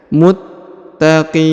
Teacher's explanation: huruf ta berharakat tasdid maka ditahan dan ditekan ya Muttaqin kemudian huruf Qi dipanjangkan boleh dua boleh empat boleh